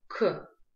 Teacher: букву К мы произносим с придыханием